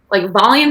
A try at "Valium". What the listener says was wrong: Real quick, Valium? You said volume, like your volume on your remote control, like sound.